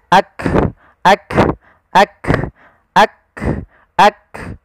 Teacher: Sehingga ketika melafalkan huruf kaf, yang perlu kita bunyikan dulu yang syiddahnya, yaitu kita tahan suaranya, baru kita alirkan nafasnya